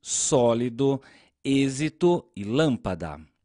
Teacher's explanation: nas palavras sólido êxito e lâmpada a sílaba que nós pronunciamos com mais força é a antepenúltima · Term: proparoxítonas